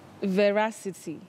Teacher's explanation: You say veracity with a stress on the second syllable